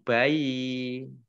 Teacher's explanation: nunnya dibaca gunnah, ya, nun tasdid ditahan 2 harokat kurang lebih.